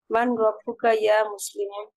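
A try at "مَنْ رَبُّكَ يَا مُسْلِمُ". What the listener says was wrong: মার রাব্বুকা ইয়া মুসলিমু। দেখেন আমরা একটা জানি যে ইদগাম হয়, নুন সাকিনের পরে যদি র আসে তাহলে নুনটা না পড়ে রকে সরাসরি ধরে ফেলে। মার রাব্বুকা ইয়া মুসলিমু আইয়ুহাল মুসলিমু।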